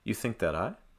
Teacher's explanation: I would place the heavier stress on I